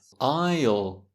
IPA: aɪl